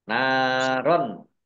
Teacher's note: fathah tanwin bertemu dengan huruf kha, bacaan izhar, dibaca jelas